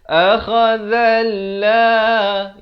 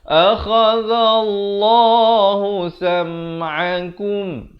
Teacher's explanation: Allah, lafz jalalah ni dibaca tebal.